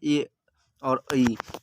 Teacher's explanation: कंठ और तालु से जो बोला जाता है ए और ऐ